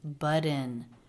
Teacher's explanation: these two words linked together with a flap T why because the T comes between two vowels